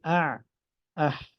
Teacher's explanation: اور اس سے تھوڑا سا اوپر، اب جس کو وسط حلق یہاں پہ لکھا گیا ہے، یہ عین ہا، یہ اس کا مخرج ہے، یہ حلق کے درمیان سے ادا ہوتے ہیں